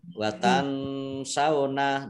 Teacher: nun sukun bertemu dengan huruf sin bacaan ikhfa